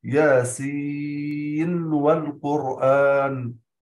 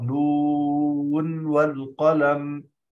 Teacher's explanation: لا يضغم الإمام حفص النون في الواو حال الوصل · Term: الإظهار